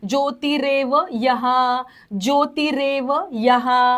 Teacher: पुढचा विसर्ग पूर्ण बोलायचा आहे.